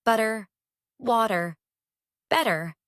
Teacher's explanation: in rapid speech, the T between two vowels becomes a tap. A quick, light touch of the tongue against the alveolar ridge. · Lighten the pressure. The tongue taps quickly without the full stop of a normal T. It is closer to a soft D, but not quite. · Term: tapped T, the tapped T